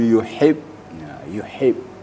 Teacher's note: makharijul hurufnya adalah pada wastul halq pertengahan tenggorokan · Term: huruf ha